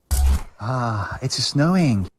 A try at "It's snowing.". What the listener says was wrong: There's an obvious ah that's been added in between the two words there.